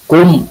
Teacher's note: ini adalah idhar syafawi, dibacanya harus jelas, artinya mimnya harus jelas. Kum, jangan kum, jangan gitu.